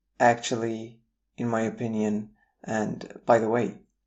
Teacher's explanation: We have a rising tone when we use words like actually, in my opinion, and by the way. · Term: Introductory words intonation